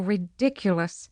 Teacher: certain and forceful stress on the second syllable